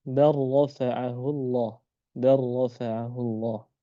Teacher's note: Nah, adapun pengecualiannya ya, pengecualiannya juga dari shaghir ya, hanya dari shaghir itu hukumnya idgham pada kalimat ya ketika lam sukun ketemu huruf ra